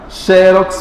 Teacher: Xerox, mais forte é o xe.